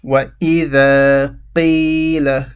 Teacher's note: The ya sakin stretches the qi. · So the is stretched, the alif stretches the fatha, mad asli